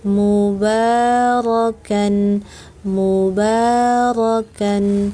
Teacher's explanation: Ro itu tebal, takhim. Ro, angkat. Seluruh lidah.